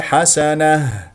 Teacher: وتكون هاء ساكنه مهموسه من اقصى الحلق